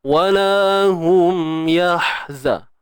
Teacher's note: Huruf ha pedas? Pedas kan? Tengah kerongkong kita sempit kan?